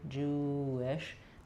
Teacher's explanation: So it's not the same as if I'm saying the full word wish with a strong W, but Jewish. The W sound just naturally connects the U and that next vowel.